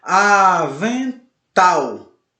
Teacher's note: Avental. Oxítona, embora não seja acentuada, mas a sua sílaba tônica forte é a última